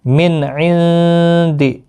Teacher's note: نون ساکن کے بعد دال آئے، اخفاء حقیقی ہوگا، گنہ کے ساتھ پڑھیں گے